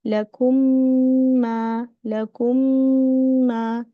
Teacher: Here we are making the gunna, long gunna, pressing the meme inshallah for the ma.